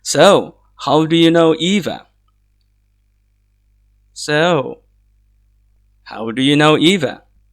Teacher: So this is a falling tone at the end when it comes to the word Eva.